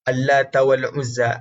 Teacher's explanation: Allat dibaca dengan tarqiq, dibaca dengan tidak tebal